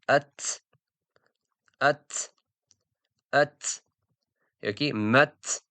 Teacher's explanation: Ta, ta sukun bilan kelganda qattiqroq o'qiladi. Sukun bilan kelsa qattiqroq talaffuz qilish. · Qattiqroq talaffuz qilish bu o'sha qattiqroq o'qish, harf sukunli bo'lganda o'sha harf so'nib portlaydi, ya'ni kuchliroq talaffuz qilinadi.